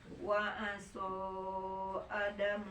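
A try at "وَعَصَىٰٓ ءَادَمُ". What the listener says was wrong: Adamu. Panjang ya, mat badal.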